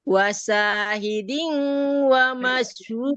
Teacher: Diunya tahan dulu. Diu agak lama sedikit, Bu.